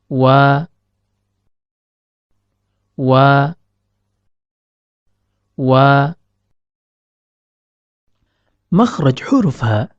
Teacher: dari pertemuan antara bibir atas dan bibir bawah namun perlu diperhatikan tatkala melafazkan huruf wau kedua bibir tidaklah merapat akan tetapi terdapat rongga antara bibir atas dan bibir bawah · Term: huruf waw